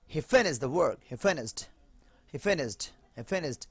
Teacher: হালকা ঠ চলে আসে, এটা ইজি হয়ে যায়